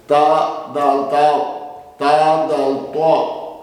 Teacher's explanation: زبان ثنایا کی جڑ سے ادا ہوا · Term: حروف نطقیہ